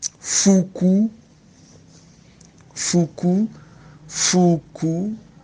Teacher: The two U's. The first one has a falling stress mark from left to right, and the second one has rising from left to right.